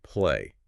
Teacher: Your throat is vibrating on that Y sound. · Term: voiced sound